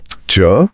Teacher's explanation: आप अपनी जीभ पर ध्यान देकर च बोलिए। च आपकी जीभ का बीच का हिस्सा ऊपर तालू को छुएगा।